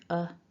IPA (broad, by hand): ə